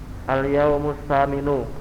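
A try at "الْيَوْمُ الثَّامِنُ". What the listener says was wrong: Nggih.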